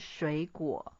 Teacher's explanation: third tone plus third tone. The first third tone will change into second tone